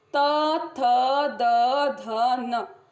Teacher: जीभ दांत को स्पर्श कर रही है, तो इसका उच्चारण स्थान हो गया दंत